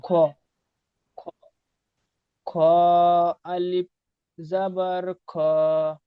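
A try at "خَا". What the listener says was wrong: আরেকটু টান দেন, খ আলিফ জাবার খ, এক আলিফ টান হবে।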